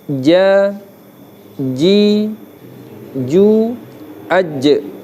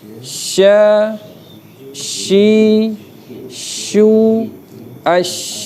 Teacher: Jim menempel, shin terbuka sedikit ditambah dengan dorongan angin, desir angin. Ya lebih terbuka.